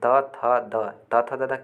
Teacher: त वर्ग का जो उच्चारण स्थान होता है दोस्तों दंत होता है